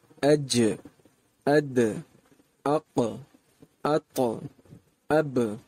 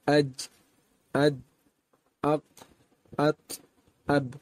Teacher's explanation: ان حروف کی ادائیگی کے وقت آواز مکمل طور پر بند نہیں ہوگی، باوجود اس بات کے کہ ان کا تعلق حروف شدیدہ میں سے ہے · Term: صفت قلقلہ